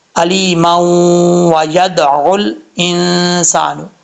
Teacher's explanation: اگر ملا یہاں پہ سٹاپ نہیں کرنا چاہتے، ملا کے پڑھنا چاہتے تب بھی پڑھ سکتے ہیں، پھر میم کو واو سے ملائیں گے، ادغام یرملون ہوگا